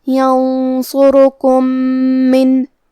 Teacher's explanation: کلمت من، یہاں حکم ہے ادغام، لہذا ہمیں پہلے میم کو دوسرے میم میں ملا کے ایک ہی میم غنہ اور تشدید کے ساتھ پڑھنا ہے